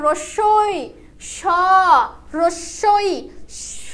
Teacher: যখন আমরা বলছি হচ্ছে রস্যই কিংবা স, তখন আমাদের জিহ্বাটা আমাদের তালুতে গিয়ে ঠেকছে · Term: তালব্য